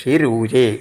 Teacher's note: ഋഷിഹി എന്നുള്ളത് ആ വിസർഗം ര ആയിട്ട് ഋഷി രൂജേ